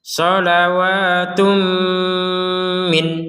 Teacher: berhentinya di min, maka min atau nun sukun ini dibaca dengan jelas.